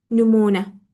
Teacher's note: Mən artıq ikinci hecaya düşdü deyənə mən vurğunu gətirib ikinci hecanın üzərinə qoya bilmərəm. Nümunə sözündə fikir versəniz bizdə vurğu hara düşür? Sonuncu hecaya.